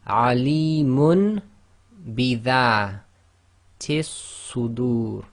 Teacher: So we change the noon sakin to a meme sakin inside of the dhammatain. So they've only drawn one dhamma with the meme, and we apply the ghunna. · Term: Iqlaab